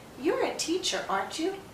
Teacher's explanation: When we're confirming, we're asking a real yes-no question, so our voice tends to go up. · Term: rising intonation